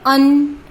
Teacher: देखिए, ये अ की ध्वनि निकलती है ना, तो अन, अनुनासिक अ, नासिका से आ जाएगा